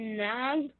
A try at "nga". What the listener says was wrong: When you see this word nga, okay? As in nga, not nang, nga, okay? That's how you pronounce it. Nga lang.